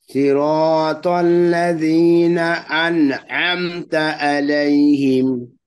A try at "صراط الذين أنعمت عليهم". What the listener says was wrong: ওকে, আমতা আলাইহিম এর জায়গা হামজা হয়ে গেছে, আবার বলেন।